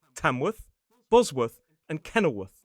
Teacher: Quite commonly, as a suffix, you'll hear it pronounced as worth. A schwa, again, in a reduced syllable, worth.